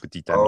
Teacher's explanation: there's a T, which wouldn't normally be pronounced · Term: liaison